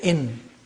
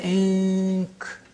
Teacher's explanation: pronouncing the noon not from the point of articulation of noon, which is behind the upper teeth, but from the point of articulation of the next letter. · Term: al-ikhfa